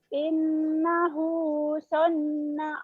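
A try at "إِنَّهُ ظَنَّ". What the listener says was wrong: bukan sonna, zonna. Zonna bukan sonna ya.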